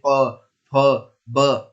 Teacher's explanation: हमारी जीभ होंठों के पास आकर टकराती है, जैसे आप बोलेंगे प फ ब, और हमारे होंठ दोनों आपस में मिलते हैं। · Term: ओष्ठ